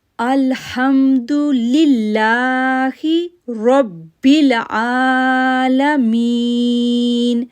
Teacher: اب الحمدللہ، لام کو کھینچا، لام کو لام کے ساتھ جوڑا، تشدید ہونے کی وجہ سے 1 سیکنڈ کے لیے رکے، پھر لا کو نرمی کے ساتھ پڑھا کیونکہ اللہ کے نام سے پہلے زیر ہے، لا کو 2 سیکنڈ کے لیے کھینچا، پھر ربل، را کو با کے ساتھ جوڑا، رب ہارڈلی، را کو پر آواز پڑھا اور پھر با کے ساتھ ہارڈلی جوڑا کیونکہ با کے اوپر تشدید ہے، رب العالمین.